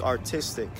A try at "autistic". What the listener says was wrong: Autistic. No R. I do that all the time too.